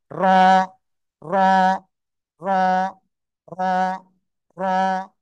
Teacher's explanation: জিহ্বার আগার পিঠ, তারপর আবার উপরের তালুর সাথে লাগাতে হবে, লাগিয়ে মোটা আওয়াজে উচ্চারণ করতে হবে।